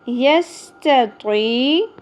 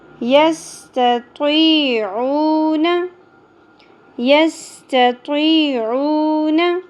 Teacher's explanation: یستطیع یہاں پہ پیش کے بعد واو مدہ ایک الف کے برابر کھینچنا ہے